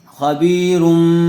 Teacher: آپ کو بتلایا گیا تھا کہ تنوین یا نون ساکن کے بعد با آ جائے تو نون کو میم سے بدل کر غنہ اور اخفا کے ساتھ پڑھیں گے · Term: اقلاب